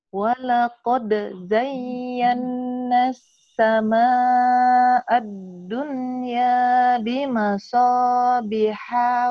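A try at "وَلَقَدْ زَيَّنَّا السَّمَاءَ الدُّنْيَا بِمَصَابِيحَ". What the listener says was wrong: Ibu, yang panjang dipendekin, yang pendek dipanjangin, itulah ibu sekarang. Ini mah tobi'i.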